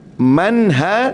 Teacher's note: nun mati jumpa ha, tak perlu dengung di sini, kita baca izhar.